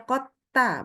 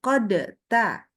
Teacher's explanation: tidak ada qalqalah pada huruf dalnya